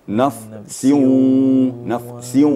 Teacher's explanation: bibirnya dimainkan bibirnya Iya sambil gunah naf nafs Nah itu ya diangkat bibirnya kemudian suaranya mendengung ke hidung